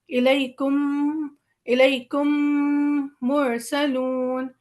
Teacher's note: ہم میم پہ بہت زیادہ وزن دیتے ہوئے اور ادغام دیتے ہوئے ملاتے ہوئے، یعنی دونوں میم ہم ملا رہے ہیں